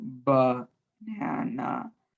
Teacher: both the first A and the last A in the word banana have the schwa.